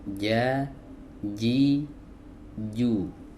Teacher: Berikutnya kita masuk ke huruf jim. Ya, huruf jim keluar dari wasatul lisan atau tengah lidah